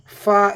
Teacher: ഫാ എന്ന് പറയുമ്പോൾ കാറ്റ് വരുന്നുണ്ട് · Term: ഹംസ്